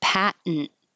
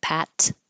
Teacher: the T can disappear and you can make it a syllabic N